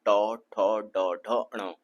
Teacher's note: मु के अंदर जो गहरा वाला भाग है ऊपर की ओर वो क्या कहलाता है मूर्धन्य स्थान कहलाता है मूर्धा कहते हैं उसको तो ट वर्ग जो ट वर्ण है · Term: मूर्धन्य व्यंजन